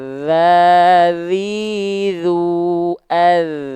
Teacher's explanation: Jadi huruf dzal itu wadhu wadzalu wasa lil ulya min tarafaihima. Huruf dzal itu disentuhkan tipis-tipis saja asal nempel dan alirkan suaranya dengan deras.